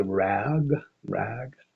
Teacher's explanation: You have the a, and it goes into the g, And because your tongue has to go into a certain position in order to make the g sound, the hard g sound, the rear of your tongue has to lift way up and hit the roof of your mouth. It pulls it out of the a position and shifts it into an e.